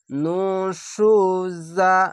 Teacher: যা উচ্চারণ হচ্ছে ঝিনঝিন করে